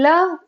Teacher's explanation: ल पार्श्विक व्यंजन है। पार्श्विक है क्योंकि हवा जो है बगल से निकलती है।